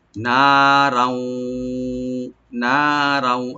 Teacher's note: তানবিনের পর যেহেতু ওয়া আসছে, এখানে আমরা ইদগাম উইথ গুন্না করব, এখানে গুন্না সহকারে আমরা সংযোগ করব ওয়ার সাথে।